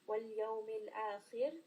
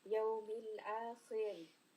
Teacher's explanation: Ra is going to be light. The letter before has kasra and then Ra has a sukun. So we are going to switch from heavy kha to a light Ra.